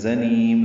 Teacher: زا کو تیز صفیر کی آواز سے ادا کریں گے، نون کو لمبا کریں گے وقفاً، زنیم میم ساکن پہ اظہار ہے.